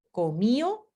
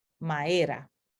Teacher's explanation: tenemos aquí la A con pronunciación más larga, cantá, porque se ha elidido esta D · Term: elisión